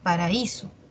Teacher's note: Está la A y la I, son de diferente timbre. La A es abierta, la I cerrada, y la mayor fuerza de voz está en la cerrada. Paraíso. Lo mismo pasa en increíble, oído, ataúd y noúmen.